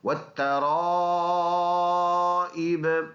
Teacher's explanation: اس کی جوڑ ہے را الف مد زبر را، حمزہ زیر ای، والترائی با زیر بی، والترائبی وقف کریں گے، یہ زیر نہیں پڑھیں گے قلقلہ کر کے